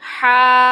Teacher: ہا کے اوپر کھڑی زبر ہے اور میم کے اوپر مد ہے، 6 حرکات لمبا کریں گے